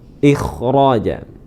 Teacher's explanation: Dikecualikan kalimat ikhraj atau ikhraja. Ini tetap kha-nya kita tebalkan